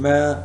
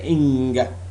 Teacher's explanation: if you produced a sound man you can feel some sort of vibration in the nostrils